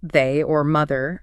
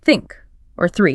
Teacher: Pay attention to making it voiced like in they or mother feel the vibration and unvoiced like in think or three just air. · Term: th sound